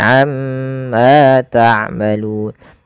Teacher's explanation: tahan pada bunyi ma, amma, karena pada lafal tersebut ada yang dinamakan dengan bacaan gunnah. Itu cara membacanya, nya ditahan. · itu cara membacanya mnya ditahan amma jangan langsung amma tapi amma taalun ma panjangkan dua harakat karena ia mad thabi'i